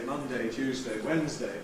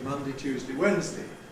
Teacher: We have a choice whether or not to weaken the ‘–day’ suffix.